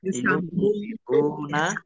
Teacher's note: Yunfiquna, nun sukun bertemu dengan huruf fa, bacaan ikhfa, dibaca samar-samar.